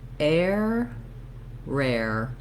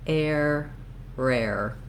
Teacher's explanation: my tongue goes into that tight back American R position. It moves slightly forward for the air portion of the air diphthong, and then back to the tight R.